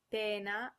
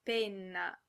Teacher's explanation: pena with a single consonant, which means pain, and penna, which has a double consonant and means pen or feather.